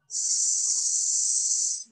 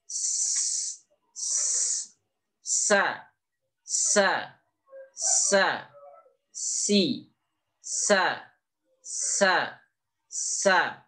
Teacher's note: di ujung lidah yang menempel pada gigi seri yang bawah pangkal gigi seri yang bahwa sehingga posisi lidah kita agak menekuk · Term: sin